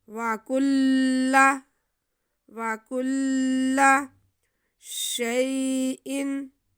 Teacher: یا ساکن سے پہلے زبر یا لین، اس لیے ہم اسے بالکل بھی نہیں کھینچیں گے